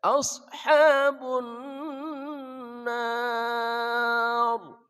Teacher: Alif lam bertemu nun, alif lam syam siyah. Ma'al gunah bersama dengung. Tahan. Ashabun nar.